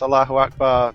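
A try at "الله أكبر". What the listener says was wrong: You keep emphasizing the A in Akbar. You don't say Akbar. Akbar.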